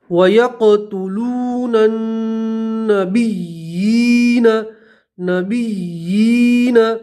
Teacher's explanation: بآیات اللہ ویقتلون نن، ٹھیک ہے، الف لام نہیں پڑھیں گے، نون کو یہاں نون سے ملائیں گے، ٹھیک ہے. اور اس نون پر تشدید ہے، نون میں گننا کریں گے